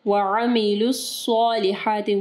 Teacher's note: وعاملوا نہیں پڑھنا، عین کے اوپر صرف زبر ہے، وعملوا الصالحات، صاد کو جو ہے ہیوی پڑھنا ہے اور ہا کو جو ہے واضح پڑھنا ہے، ٹھیک ہے۔